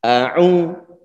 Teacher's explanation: Sebelumnya dia dhammah. Ini adalah juga bacaan mat. Sehingga perlu kita panjangkan dua harokat ataupun satu ayunan